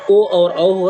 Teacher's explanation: कंठ और ओष्ठ से दोनों से उच्चारण होता है, ओ और औ है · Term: कंठोष्ठ